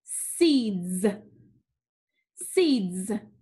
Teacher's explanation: what do you notice about the s sound seeds it makes the z sound